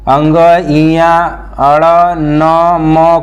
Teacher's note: अंग, इया, अड़, न, म को नासिक के व्यंजन बोलते हैं। नासिक के व्यंजन कहते हैं। इसका उच्चारण स्थान जो होता है नाक से होता है